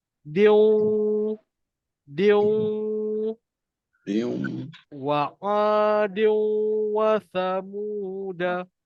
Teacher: Masukkan bunyi N daripada tanwin tu ke dalam huruf waw. Maknanya sebelum ni biasa dia kita baca din, tapi sebab sebelah ada waw, kita baca dia diu, diu, wa adiu wa samuda. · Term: masuk dan dengung